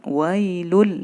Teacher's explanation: Idgham yang tidak didengungkan. Wailul, langsung. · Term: idgham bila gunnah